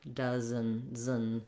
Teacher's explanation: And then we don't really do much of a vowel, as I said, for this E. We just go right from the Z sound to the N sound. · just trying to have your tongue move from that Z position behind the teeth and lifting up into the N · It doesn't have to be a short N, but it is an unstressed syllable. So my does syllable is long and my N syllable is fairly short.